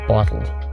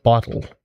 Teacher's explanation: I use I guess what's called a glottal T. So I would say bottle.